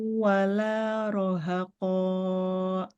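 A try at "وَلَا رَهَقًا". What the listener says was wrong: Jangan panjang banget, Mbak. qafnya. 2 harkat aja. Wala rohako. wala rohako.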